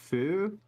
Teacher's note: the f is a little weird because it's a bilabial sound